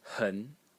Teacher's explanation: The next character is pronounced hun in the second tone.